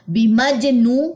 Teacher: اب یہاں پہ جیم جزم جو ہے وہ کیا لے گا؟ قلقلہ لے گا. بیمجنو، واو مد 2 کاؤنٹس لمبا کریں واو مد کو. · واو مد 2 کاؤنٹس لمبا کریں واو مد کو. نون کی دونوں زیریں ہم ڈراپ کر دیں گے وقف کی صورت میں، تو نون پہ آ جائے گی جزم.